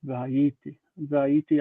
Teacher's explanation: normally you transfer the stress to the end, but with this verb you don't